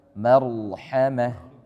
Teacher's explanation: Rok tafkhim. Dia tebal, jelas roknya.